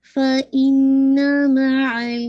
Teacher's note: فا پہ ہمس ہوگا. فا ایر آ رہی ہے